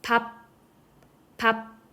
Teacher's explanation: 파열이 일어나지 않아요. 종성에서는 파열 단계가 일어나지 않는다는 것이 특이점입니다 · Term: 종성의 비읍